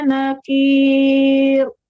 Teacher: tipiskan kafnya dan tipiskan juga rohnya